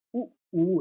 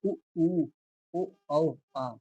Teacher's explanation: वे स्वर जिनका उच्चारण करते समय जो आपके अधर हैं, जो आपके ओष्ठ हैं वो गोल हो जाते हैं, अर्थात वृत्त जैसी आकृति को ग्रहण कर लेते हैं। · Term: वर्तुल स्वर